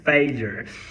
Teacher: É um L, mais a palatal, mais um schwa e um R no final.